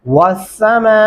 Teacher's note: मीम के ऊपर 4 अल्फ़ी मद्दा है, हम 4 अलिफ के बराबर तक इसे लंबा करते रहेंगे